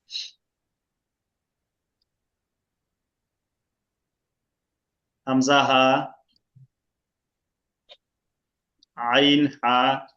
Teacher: হামজা হা এক মাখরাজ থেকে, আইন হা গলার মাঝখান থেকে, গইন খ গলা শেষ থেকে। গলার শেষ থেকে গইন খ।